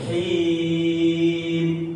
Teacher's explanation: Kalau yang di akhir himnya boleh dipanjangin.